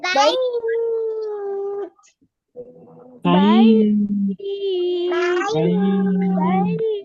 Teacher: লিনের হরফের পরের হরফে যদি আপনি থেমে যান, ওয়াকফ করেন, তাহলেও তিন আলিফ টেনে পড়তে হয়